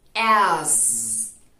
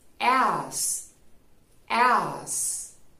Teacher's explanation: Ten en cuenta que la Z vibra en las cuerdas vocales. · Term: sonido de Z